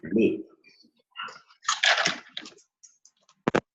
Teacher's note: the sound is produced when the tongue touches just above the upper teeth. So you can see the position of the tongue touching just above the upper teeth.